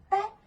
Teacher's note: Selanjutnya juga ada apicodental, yaitu hambatan terjadi antara ujung lidah dan gigi atas